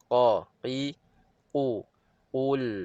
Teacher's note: ada pangkal lidah terangkat semasa menyebutnya dia tebal dan dia terbuka contoh Q dia bukannya tebal yang tertutup ataupun tebal yang penuh